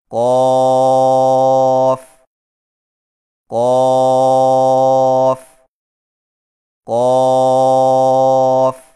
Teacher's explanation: قاف کی ادائیگی میں زبان کی جڑ کو کوے کے متصل تالو پر لگا کر موٹی آواز میں پڑھیں، یعنی قاف قاف قاف.